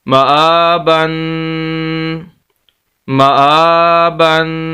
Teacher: غنہ کہتے ہیں ناک میں آواز لے جانے کو، تنوین کے اوپر غنہ کیا جاتا ہے، ناک میں آواز جائے گی